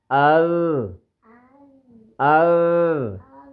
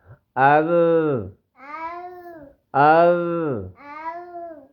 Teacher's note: ال ال جی ادھر نہیں بیٹا، زبان بہت زیادہ باہر نکل آئی ہے، زبان نہیں باہر نکالنی، زبان کی نوک اوپر کے دانتوں کی نوک کو لگے۔